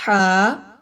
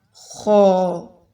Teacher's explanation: میں ہا کو باریک پڑھی اور خو موٹا